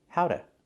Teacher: The T changes to a fast D.